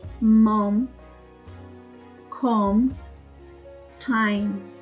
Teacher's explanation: IPA symbols /m/ is produced by lightly pressing the lips together while making the sound with the vocal cords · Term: consonant sound M